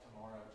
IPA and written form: təˈmɒrəʊ (tomorrow)